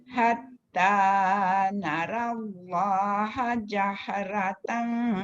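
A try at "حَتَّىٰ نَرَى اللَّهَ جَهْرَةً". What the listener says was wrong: Dekat ra dua-dua tu dia tak boleh sama dengan huruf-huruf yang nipis. Hatta nara ada jadi nara dan jadi ra lah. Hatta narallaha jahratan. Narallaha jahratan.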